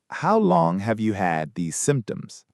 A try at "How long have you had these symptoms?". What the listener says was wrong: Perfect pronunciation.